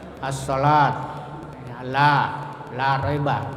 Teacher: Mat tabi'i, ya, mat yang panjangnya biasa. Ya, kalau ada fathah sesudahnya ada alif.